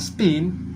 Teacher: Dalam kata spin, pi diucapkan tanpa aspirasi pi